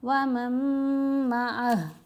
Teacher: وَمَن مَعَهُ، یہاں ہا کے اوپر الٹا پیش ہے، وقف کرنے کی صورت میں ہم نے ہا کو ساکن کیا، معہو نہیں پڑھنا